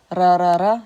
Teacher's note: If it's a new sound for you, practice trying to trill the R sound by hitting your tongue against the roof of your mouth right behind your teeth. Okay, there's a ridge.